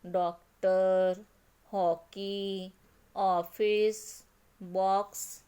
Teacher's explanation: विवृत अ का उच्चारण, अ का उच्चारण आ और ओ के बीच का होता है।